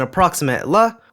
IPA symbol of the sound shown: l